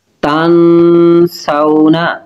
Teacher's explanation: نون ساکن کے بعد سین حروف اخفا ہے تو غنہ کریں گے